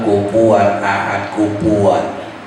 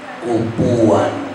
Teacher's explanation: kufuan itu gigi atas ketemu perut bibir